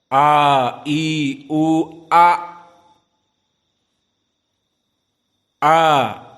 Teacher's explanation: Di mana makhraj hamzah? Aqsa al-halq. Di al-halq yang paling bawah.